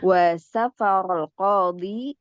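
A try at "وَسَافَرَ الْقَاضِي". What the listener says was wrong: Sanya agak panjang ya. Dibiasakan jangan safar. Safarul qadi.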